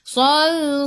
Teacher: Sal. Matikan dengan lam, hujung lidah menyentuh gusi atas.